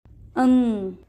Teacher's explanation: यह एक अनुनासिक व्यंजन है जिसका उच्चारण नाक से किया जाता है